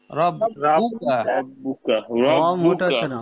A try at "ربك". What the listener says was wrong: র মোটা হচ্ছে না, রাব্বুকা